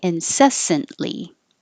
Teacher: Incessantly. Don't say the T.